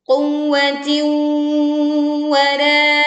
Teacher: Bedanya waw yang pertama hanya ditekan tanpa didengungkan. Sedangkan waw bertasydid yang kedua ditekan dan kita meleburkan kasroh tanwinnya ke waw sehingga kita membacanya dengan dengung.